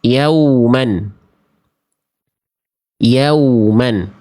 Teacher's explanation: huruf waw itu dilafalkan dari kedua bibir. Kedua bibirnya diapain? Posisinya posisi maju. Seperti pengucapan huruf U. Jadi memang huruf waw ini dalam keadaan apapun, mau sukun, mau harokat, dia tetap dibaca muncung.